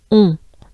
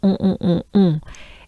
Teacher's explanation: we have the sound on. It's pretty closed up, pretty nasal.